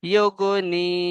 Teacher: ইয়া সাকিন ডান দিকে জের, কি ইয়া মাদ্দা বলে, ইয়া মাদ্দাকে একালি পরিমাণ টান দিয়ে পড়তে হবে